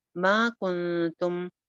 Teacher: کنتم پہ اخفا ہو رہا ہے، نون ساکن کے بعد تا ہے